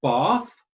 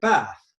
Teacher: somebody in the north in the south of england might say bath and somebody in the north of england might say bath so that's a change of vowel sound is it's an accent change it's just a different way of